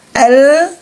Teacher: tidak ada suara tebal berarti dia istigfal terhamparnya lidah kita